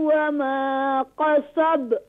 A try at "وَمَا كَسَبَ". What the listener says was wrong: كاف is light